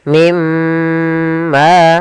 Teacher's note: masukkan nunnya ke huruf mim dan kemudian ditahan dengan gunah · pada lafal ma ada mad thobi'i. Di sini panjangnya dua harakat. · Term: idgham bighunah, idgham bi gunnah